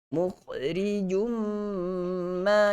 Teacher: Jum tanin bertemu dengan mim. Okey, jum masuk terus dalam mim. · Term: idgham al-ghunnah